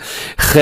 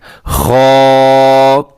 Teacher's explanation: اسے خے نہیں پڑھنا، بلکہ آپ نے خا لمبا کرنا ہے تھوڑا سا اور موٹا پڑھنا ہے